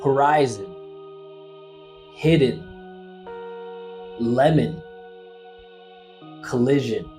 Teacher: However, we do have some consonant sounds that have a lot of pull. So when we find these consonant sounds at the end of an unstressed syllable, they completely wipe out the vowel sound